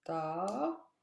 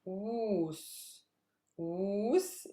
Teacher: Woos is a super heavy syllable, so that's where my stress lies.